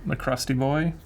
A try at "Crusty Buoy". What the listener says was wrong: Crusty Buoy. Yes. But it sounds like Crusty Boy. But it's Buoy.